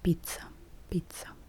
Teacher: t, and s as one sound